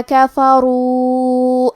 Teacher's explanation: کلمت کفروا میں را کو موٹی آواز میں پڑھیں گے کیونکہ را پہ پیش ہے، واو پہ مد کا علامہ ہے، یہ مد جائز منفصل ہے، اور مد جائز منفصل کا معنی ہے کہ حرف المد پہلے کلمہ کے آخری میں ہو اور اس کی وجہ جو کہ حمزہ ہے وہ دوسرے کلمہ کے شروعات میں آئے۔